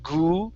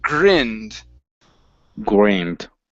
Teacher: we don't want to replace the R sound with an oo, saying grinned.